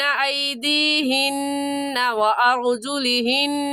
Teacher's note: یفترینہ بین ایدیہن وارجلہن. نون مشدد ہے ایدیہن میں بھی اور وارجلہن میں بھی، اور نون مشدد پر ہمیشہ غنہ کرتے ہیں